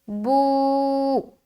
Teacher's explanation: با کے اوپر الٹا پیش ہے، الٹا پیش برابر ہوتا ہے واو مدہ کے، الٹا پیش کو ایک الف کے برابر کھینچ کر پڑھیں گے، جیسے بو۔